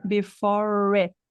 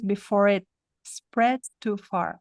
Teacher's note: Esse T não vai ser ouvido porque vem uma consoante depois.